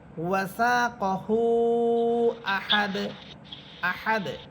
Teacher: দুই পেশ দন আহাদুন এখানেও দাল হরফের উপরে আছে দুই পেশ থামলে দাল হরফটা সাকিন হবে এবং কলকলা হবে কিন্তু কোন টান হবে না · থামলে দাল হরফটা সাকিন হবে এবং কলকলা হবে, কিন্তু কোনো টান হবে না। এটা মনে রাখবেন যে আপনি ওয়াসা কহু আহাদ, আহাদ হাত বলে যে টানবেন, এটা টানা যাবে না, কোনো টান হবে না।